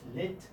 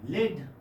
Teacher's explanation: Three-term description would be voiced alveolar lateral consonant.